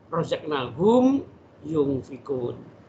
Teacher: Enggak boleh razaqnahum yunfiqun, enggak boleh. Jadi enggak boleh berdengung, tapi itu karena idhar. Tetap dibaca jelas.